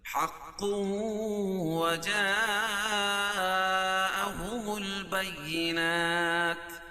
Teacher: وجا ایک ہی کلمہ تو مد متصل ہوگا، اس میں توسط اور طول ہے، قصر جائز نہیں ہے. البینات وقفہ کی صورت میں یہ تا کے اوپر جو پیش ہے اس کو جزمہ سے بدل دیں گے.